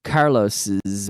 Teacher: If we have a name that ends in an S, like Carlos, we say Carlos's. It sounds like a Z.